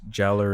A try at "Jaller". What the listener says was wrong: It's Jala, but it's spelled Jaller. It's not a hard R. It's like a soft